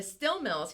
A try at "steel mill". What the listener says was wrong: she meant to say steel mill, not still mill. Steel mill. You said still.